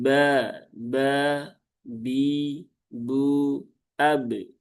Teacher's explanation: Padahal huruf ba sifatnya bukan hamas tetapi jahar. Kemudian di sini baknya pendek ya, jangan dibaca panjang.